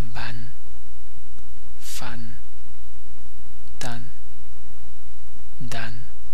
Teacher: la combinación de las vocales A, E, O con una N al final de una palabra se pronuncia nasalizada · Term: nasales